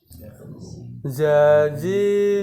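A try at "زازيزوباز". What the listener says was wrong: Bukan bas. Bukan ke sa, tapi ke za.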